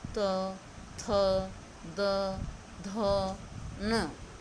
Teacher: इनका उच्चारण स्थान बेटा होता है दंत। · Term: तवरग